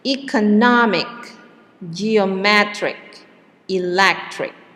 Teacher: the suffix is ich the syllable and yeah the syllable the stress is on the syllable before the ending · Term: word stress